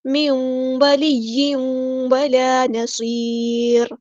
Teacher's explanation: نون ساکن کے بعد واو اور تنوین کے بعد بھی واو، ادغام مع الغنہ ہوگا